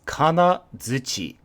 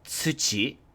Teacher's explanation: We just added a z sound instead of a t sound because it's connected to na, which is a kind of sounded vowel.